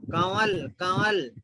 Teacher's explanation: نون جو ہے ناک میں چلے جاتا ہو، ناک میں سے پڑھنا.